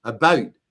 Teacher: That's and in some places it actually becomes a triphthong. If you get up into Northern Ontario, you start to hear about, which is like there's 3 vowels in there